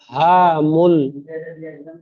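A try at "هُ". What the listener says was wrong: হাফেজ হু বানান করলেন, আর উচ্চারণের সময় হা মূল হয়ে যাচ্ছে, হা জাবার হা হয়।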